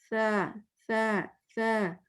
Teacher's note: زبان tip of the ٹنگ دونوں دانتوں کے درمیان آتی ہے